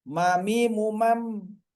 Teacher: Kemudian yang dari bibir, masih dari bibir adalah huruf mim. Ini keluar dari menutup kedua bibir dengan udara keluar dari hidung